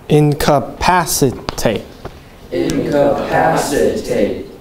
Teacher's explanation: there are five syllables and the third syllable gets the accent